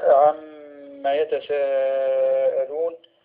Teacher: الميم المشددة، وهي حكمها الغنة مقدار حركتين